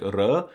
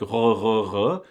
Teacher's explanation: It's supposed to be a little rolly like r, or guttural like r